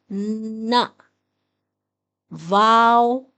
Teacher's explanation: نون میں ہم زبان کی نوک کو اوپر والے دانتوں سے لگائیں گے اور آواز ہے ن۔